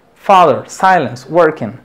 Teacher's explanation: va acentuado en la primer sílaba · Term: sílaba estresada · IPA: /faðər/ /ˈsaɪləns/ /ˈwɜrkɪn/